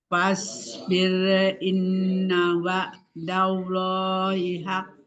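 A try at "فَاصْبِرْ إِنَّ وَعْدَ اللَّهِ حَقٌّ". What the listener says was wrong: Sempurnakan lagi lafuz jalalanya tebal. Wa'dallahi. Wa'dallah. Hilang kolkolahnya. Haqqo. Ya, jadi tebal atau tipisnya kolkolah itu mengikuti hurufnya. Kalau hurufnya tebal ya pantulannya tebal. Kalau hurufnya tipis pantulannya juga tipis.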